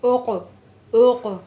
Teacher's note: قاف آ رہا ہے جس میں آواز پلٹ کر واپس آئے گی، جنہیں قلقلہ کہتے ہیں